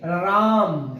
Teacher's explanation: राम में र पर बलाघात है